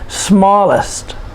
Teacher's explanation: it's a two-syllable adjective and we put the stress on the first syllable